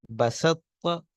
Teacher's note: بعد دیکھیے بسط، سین کے بعد طوا ہے پھر تا ہے، اس میں طوا تا کے اندر مدغم ہو گئی ہے، پڑھتے ہم ایک ہی ہیں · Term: ناقص